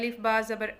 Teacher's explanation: अब सबसे पहले हम देखते हैं बा है, इसको हम पढ़ेंगे अलिफ बा ज़बर अब ये कहाँ से अदा होता है? हमारे दोनों होंठों का जो गीला हिस्सा है, अंदरूनी हिस्सा आपस में जब मिलता है तो बा अदा होता है।